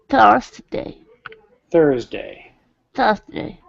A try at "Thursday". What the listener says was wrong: remember don't go too fast i don't know why but you like to go fast and it's always best to go a little slower